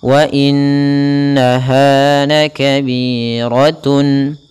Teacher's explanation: pada lafal ha ada bacaan mat tabi'i, yaitu adanya fathah bertemu alif, panjangnya 2 harakat